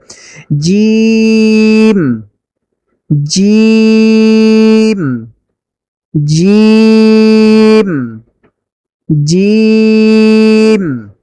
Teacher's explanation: জিহ্বার মাঝখান বরাবর উপরে লাগিয়ে জিম উচ্চারিত হয়